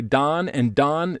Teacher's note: This is very low back vowel merger.